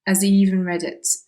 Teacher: So again, we've got, in fact, there are two dropped H sounds. So he doesn't pronounce the H on has, and he doesn't pronounce it on he either.